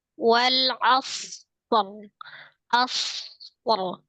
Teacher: Ro-nya memang dia tebal tapi agak lebih lirih dari sad.